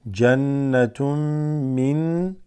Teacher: Then tun becomes tum, mixing with the meme, idgham.